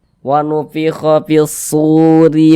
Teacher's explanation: dibaca tipis baca tarkik tipiskan huruf r-nya RI ditipiskan wfiho fishuri faidza dza dibaca panjang kenapa Kok dza